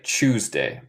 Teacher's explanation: Creo que ellos de Inglaterra dicen más como CH, like Tuesday, pero no es mi acento.